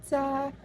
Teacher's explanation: Ra, konsonan geseran, apikopalatal, bersuara. Sa, konsonan paduan, laminopalatal, tak bersuara, non-aspirasi